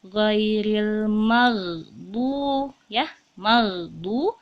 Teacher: Ini adalah ghain sukun, ya. Ghain sukun, ghain itu tempatnya di ujung tenggorokan, ya. Jadi dan dia bukan termasuk huruf qalqalah, maka tidak boleh memantul.